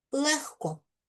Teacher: Дзвінки г перед глухими оглушуємо, вимовляємо як х